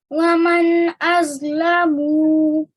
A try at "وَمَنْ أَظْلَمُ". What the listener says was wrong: See, again, you're pronouncing it 2 seconds. Just 1 second.